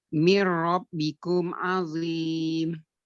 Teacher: Nun sukun ketemu dengan ro yang bertasdid dileburkan ke huruf ro tanpa dengung.